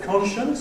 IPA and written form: ˈkɒnʃəns (conscience)